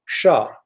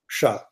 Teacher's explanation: There is this sha, retroflex murdanya, sha.